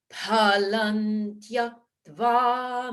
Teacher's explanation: notice the visarga in palam, that changes to palan tyaktva, the dental sound